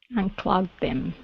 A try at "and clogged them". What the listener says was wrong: Good. Nice connection with the D and the TH. That was good.